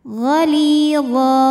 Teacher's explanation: karena ada ya sukun didahului baris kasrah, maka huruf lam ini kita panjangkan 2 harokat saja.